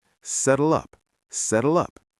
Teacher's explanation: The L sound flows right into the U.